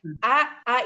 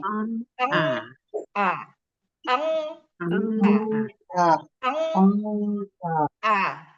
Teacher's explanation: A itu datar sedatar-datarnya nggak ada yang naik.